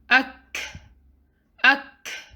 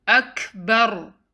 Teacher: Kaf has sukoon, hence you will do hams on kaf, which means you let breath out. Ak. It's not Akbar.